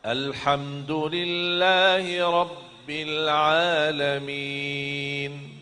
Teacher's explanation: Rabbil tekankan ba tetap tekan ba karena ada tasdid kan. Rabbil terus masuk langsung sambung ke huruf lam.